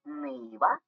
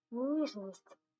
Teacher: що цікаво буває що звук вимовляється твердо Нива але так само чудово вимовляється м'яко ніжність давайте порівняємо на слух Нива ніжність нині дійсно відрізняються твердий звук